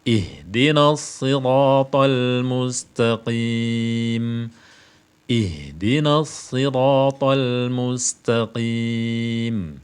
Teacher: Tidak termasuk huruf qaf, tidak pula termasuk huruf ta. Maka ta dan qaf ini jangan diberi sifat hamas, jangan diberi desis.